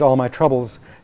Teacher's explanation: the trub receives the greatest stress because it has nuclear stress